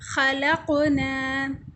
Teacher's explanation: قاف کو ہم اس طرح پڑھ رہے ہیں جیسے اچھلنا، جیسے گیند ٹکراتا ہے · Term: قلقلہ